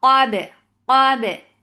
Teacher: Qaf is heavy, but keep ba light. Qab, but give a very nice qalqala on ba.